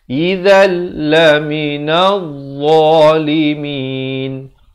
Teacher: Izal, di sini pula idgham bila gunnah. Daripada izan jadi izal.